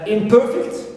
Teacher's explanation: Per is stressed, it contains long vowel